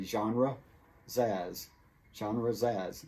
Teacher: the S from genres connects to the word as